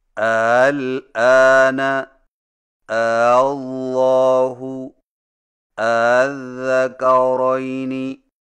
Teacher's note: دو حمزوں سے پڑھیں لیکن دوسرے حمزہ کو ذرا نرم پڑھیں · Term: تسہیل